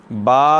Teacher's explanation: دونوں ہونٹوں کے تر حصہ سے ادا ہوتا ہے